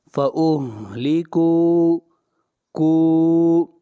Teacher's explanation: کاف کو کھینچ کر پڑھیں گے، مد اصلی